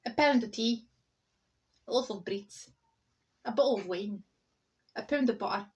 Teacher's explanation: See that intonation, falling down, rising up again and down.